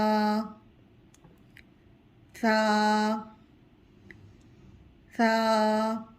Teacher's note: ثا کی ادائیگی زبان کی نوک اوپر والے سامنے 2 دانتوں کے کناروں سے ٹچ ہوگی تو تب ثا کی ادائیگی ہوگی۔